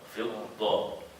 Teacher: فضة ولكن مشددة وكأن هي ضادان. ضاد ساكنة وضاد مفتوحة.